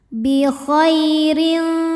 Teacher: huruf ro dibunyikan secara tarqik sebab ro berharakat kasrah tanwin ya maka cara bacanya adalah tipis ya ringan tidak perlu mengangkat pangkal lidah